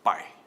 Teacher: Desço a rampa, o A é mais forte que o I é vogal, o I é semivogal, o ditongo agora é decrescente.